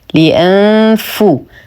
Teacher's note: نحقق الهمزة، لدينا نون ساكنة وبعدها حرف الفاء فالحكم إخفاء حقيقي مع غنة كاملة مرققة. لأنفو نقترب كثيرا من مخرج الفاء، نضع أطراف الثنايا العليا على بطن الشفة السفلى